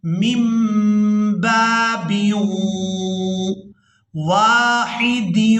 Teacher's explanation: ہم نے پہلی میم کو دوسری میم کے ساتھ ملانا ہے